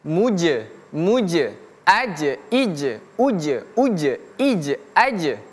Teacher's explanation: Maka huruf jim ini kalau dia sukun atau jin jimnya mati, huruf tersebut memiliki qalqalah. Ingat huruf jim kalau dia sukun maka dia memiliki sifat qalqalah. Artinya qalqalah itu memantul.